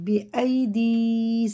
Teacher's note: ہے، حرف مدہ ہے، دونوں الگ الگ ہیں، قاعدے ہیں یہ۔ یا ساکن سے پہلے زیر ہے تو کھڑے زیر کی طرح کھینچ کے پڑھیں گے